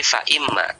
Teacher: Maka di sini aslinya adalah huruf in kemudian ma zaidah, kemudian nun sukun ketemu mim, maka jadinya idgham menjadi fa imma